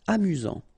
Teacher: Final T not pronounced. You've got only one S here between the vowels, so it's really this Z sound. A-mu-zant. Amusant.